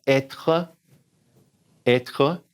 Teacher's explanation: put that R in the back